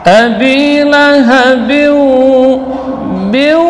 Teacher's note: tidak boleh dia keluar dari hidung karena ba bukan huruf khayshum. Ya.